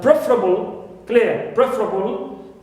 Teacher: So here also we have able, but the verb is prefer, second syllable, right, is normally stressed, but here with this word, the first one is stressed. It's preferable, it means pre is stressed. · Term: shift of stress